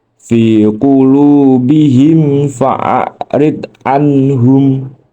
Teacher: Di situ terdapat mim sukun bertemu dengan huruf fa. Cara membacanya dengan mim sukun dibaca jelas tanpa dengung disertai bibir terkatup. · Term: idhar syafawi